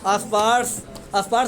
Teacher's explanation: तो स्पर्श में आधा स्व होता है लेकिन अ बोल देते हो।